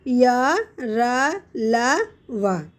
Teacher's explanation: इन व्यंजनों में जिह्वा मुख के किसी भाग को पूरी तरह नहीं छूती तथा वायु भी बहुत कम समय के लिए रुकती है, इसीलिए ये व्यंजन अंतस्थ व्यंजन कहलाते हैं।